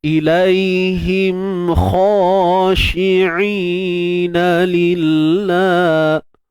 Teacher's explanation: kena angkat pangkal lidah untuk menghasilkan suara tebal pada kha. Angkat pangkal lidah.